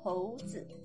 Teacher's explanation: you combine he with o in the second tone and you get hou zi, monkey